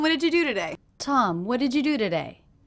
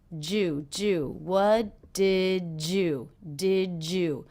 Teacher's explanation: so the D and the Y here are combining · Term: j sound